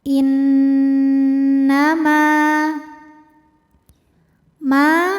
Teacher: Innama ma hukumnya mad thobi'i zohiri. Karena ada alif didahului baris fathah, maka huruf mim dipanjangkan dua harakat.